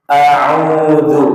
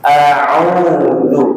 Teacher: Yang kedua, madnya lebih ditegaskan dan tetap dua haraf.